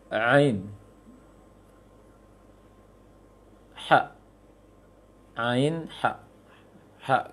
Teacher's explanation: Yang kedua dari tenggorokan adalah tengah tenggorokan